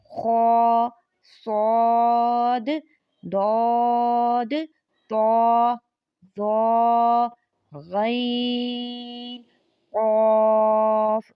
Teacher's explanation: 7 ایسے حروف ہیں جو ہر حالت میں پر یعنی موٹے پڑھے جاتے ہیں۔ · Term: حروف مستعلیہ